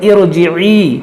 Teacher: रा साकिन से पहले आर्जी ज़ेर हो तो भी रा को मोटा पढ़ा जाता है।